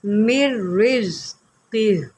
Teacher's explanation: یہاں پر را کو پہلے میم نون را زیر مر، را کو 2 مرتبہ پڑھیں گے، پھر را زا زیر رز، زا کی سیٹی بھی نکالے